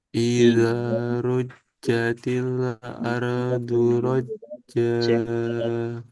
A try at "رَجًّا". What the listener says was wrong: Bukan roja, roja, roja, ruja, rujatil.